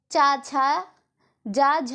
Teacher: चा छा जा झा ये जो है तालव्य व्यंजन है